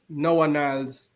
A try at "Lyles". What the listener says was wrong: I keep telling you, say his name is Lyles and not Niles. It's not River Nile, this is Lyles.